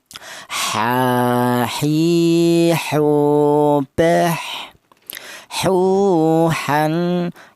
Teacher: Kemudian huruf ha. Huruf ha ini keluarnya huruf berasal dari tengah tenggorokan